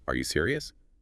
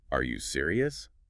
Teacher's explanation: add that little upward flick at the end